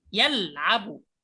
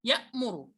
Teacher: انظر صوت اللام يأخذ حيزا يطول شيئا نسبيا عن صوت الهمزة. الهمزة تقطع مرة واحدة يا. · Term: البينية